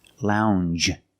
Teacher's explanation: It's a regular n, plus the soft j sound.